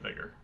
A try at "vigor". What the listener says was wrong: With the way he said vigor, it sounded like Vigar.